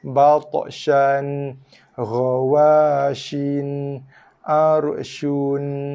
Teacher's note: Sha kita bunyikan dulu dengan kadar satu harakat, masuk makhraj nun dan sifat nun mati.